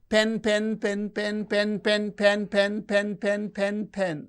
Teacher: the pitch is fluctuating it is going up and coming down going up and coming down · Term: pitch variation